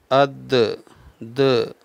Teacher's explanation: حمزہ دال زبر اد، د، یہ قلقلہ ہوتا ہے۔ د جو آواز آ رہی ہے، آواز لوٹتی ہوئی، اد یہ غلط ہے، اد۔